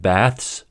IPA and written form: bæθs (baths)